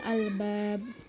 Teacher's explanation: Lalu ada huruf ba yaitu qalqalah kubra karena hurufnya itu berada di akhir kalimat sehingga diwaqafkan dan dibaca secara memantul